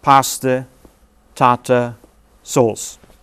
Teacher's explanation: so there are three feet here and each foot starts with a beat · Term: rhythm